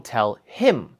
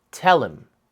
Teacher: And in English, the general rule is when something is emphasized for clear meaning, we don't do any fancy sound reductions or anything like that. But if him is not the most important word here, we can easily just remove the first sound, and that's actually what native speakers do literally all the time.